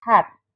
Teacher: Air flows thoroughly through the glottis without any obstruction from the tongue or lips. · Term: glottal